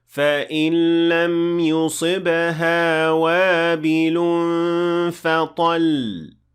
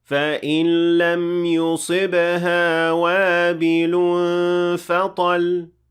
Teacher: you will apply a stress or nabr at the end of the word to show that this letter has shadda.